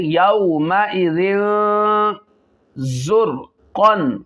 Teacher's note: تو یہاں پہ اخفا بھی ہوگا، تنوین کے بعد حروف اخفا میں سے زا آ رہا ہے اور زا میں سٹی بھی نکالنی ہے